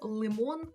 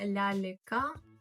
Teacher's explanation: слово лимон л тут твердо вимовляється а от ляліка тут м'яко